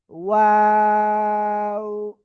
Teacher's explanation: 3 আলিফ টান হবে, 2 ঠোঁট গোল করিয়া, শুরুতে গোল হবে, শেষে গোল হবে, মাঝখানে কি ফ্ল্যাট থাকবে।